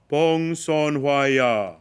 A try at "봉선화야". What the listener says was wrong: Don't make the chewing vowel. 봉선화야. When you make the vowel shape for the first vowel, which is 봉선, 봉선, don't make the chewing gesture after making the vowel shape. 봉선화, 봉선화, 봉선화야.